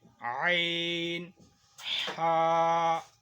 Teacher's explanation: عین، ہا، یہ حلق کے بیچ میں سے نکلتے ہیں